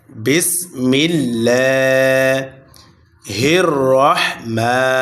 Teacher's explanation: রাহমা মোটা হবে এবং মা এক আলিফ টান হবে। মিমের উপরে খারা জবর আসার কারণে এক আলিফটানিয়া পড়িতে হয়।